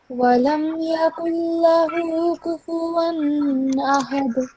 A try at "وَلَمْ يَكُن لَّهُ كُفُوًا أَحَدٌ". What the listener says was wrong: You're supposed to prolong this inverted dhamma just for a couple of seconds. ولم يكن له كفوا أحد.